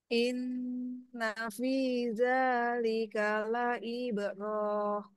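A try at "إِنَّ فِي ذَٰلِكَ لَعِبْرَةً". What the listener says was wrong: Roh, tidak ada mad, Bu. Sepertinya kurang satu ketukan, Bu.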